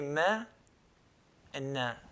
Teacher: they have a nasalization which is called a ghunna sound, okay, the sound that comes from the nose.